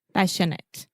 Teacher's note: the majority of adjectives in English that end in ate, we will simply produce the it sound